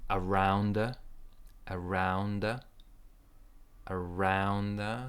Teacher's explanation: stress in the second part